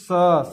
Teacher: स जब आप बोलेंगे तो आप ध्यान देंगे तो आपको पता चलेगा कि देखिए रगड़ खा के आवाज़, जो हमारी एयर है, हवा है, रगड़ खा के निकल रही है। ठीक है, तब समझ में आएगा आपको कि हाँ उसमें व्यंजन है कि नहीं। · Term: घर्षण